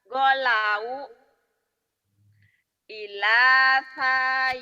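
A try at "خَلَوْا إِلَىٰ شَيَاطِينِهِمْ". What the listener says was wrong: bukan golau itu titiknya di bawah di atas kholau kholau kholau kholau ila syayatinihim kholau kholau ila syayatinihim kholau kholau ila syayatinihim.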